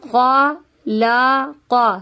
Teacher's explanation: خوا اور قاف حروف مستعلیہ ہے اسی لیے اس کو موٹا پڑھیں گے۔ خلق، لا کو موٹا نہیں کیجیے گا، صحیح ہے۔